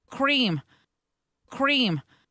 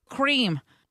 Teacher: It sounds like she's adding an extra syllable. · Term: crispy R